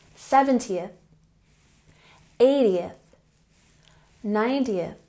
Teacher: for numbers in the tens like 20 30 40 50 the emphasis is on the first syllable